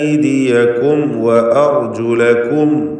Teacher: ഐദിയകും എന്ന പദത്തിൽ വന്ന സാക്കിനത്തായ മീം ശേഷം വാവും വന്നിട്ടുണ്ട്. സൂക്ഷ്മതയോടെ ഇൽഹാർ ചെയ്യുക.